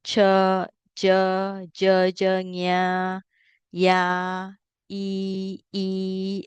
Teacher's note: Palatal, the sound is in the middle of the mouth